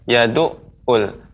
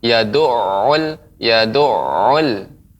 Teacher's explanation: ain sifatnya dia memantul, layin, ya, awalnya kuat kemudian melemah